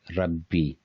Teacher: B is long, but ra is short